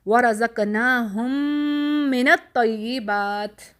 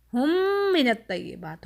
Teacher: ہم مرج کر کے غنہ کر رہے ہیں